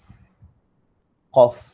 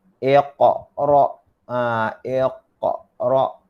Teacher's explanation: huruf qaf keluar daripada pangkal lidah